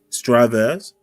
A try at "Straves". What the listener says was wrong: The E is silent. The E is silent.